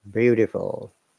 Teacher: That T sounds like D